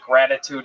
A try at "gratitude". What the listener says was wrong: gratitude? Oh, gratitude. That was a very silent G on that.